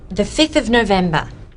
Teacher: The ones with a v sound, 5 and 12, change their v sounds to f